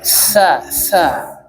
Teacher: Jadi dia punya sifat yang namanya hames yaitu mengalirnya udara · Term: hamas